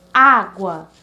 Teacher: a sílaba mais forte seria A, o primeiro A da palavra